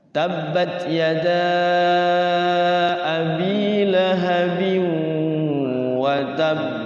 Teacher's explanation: Makanya kenapa kalau yang huruf tasydid di belakang itu qalqalah dia agak ditahan